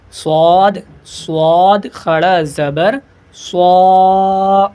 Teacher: سین کے طریقے سے اس میں بھی سیٹی پیدا ہوگی لیکن منہ کو گول کر کے موٹا کر کے پڑھیں گے صاد کو